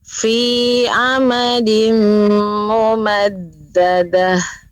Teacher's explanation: Pengucapan huruf fa juga sudah mengeluarkan nafasnya, mengeluarkan udara, aliran udara. Alhamdulillah, walaupun sedikit yang perlu diperhatikan seperti mim mati bertemu dengan mim, maka ini apalagi menjadi seperti mim bertasydid, maka ditambah dengan gunnah, yaitu dengung ya.